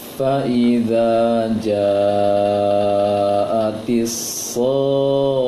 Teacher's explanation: Ida panjang 2 harokat, ja panjang sedang, panjang 4 harokat, so panjang 6 harokat. Dipanjangkan 6 harokat sod, baru masuk ke tasydid kho-nya. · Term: 3 tingkatan dari mad